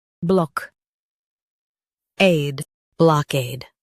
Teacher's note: Stress cade and keep block soft. It's quick.